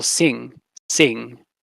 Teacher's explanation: at the end of syllables so you have for example sing sing ends with a velar nasal